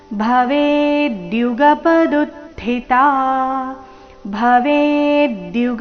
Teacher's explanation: ವೇ ದೀರ್ಘ ಬಂದು ನಂತರ ಆಘಾತ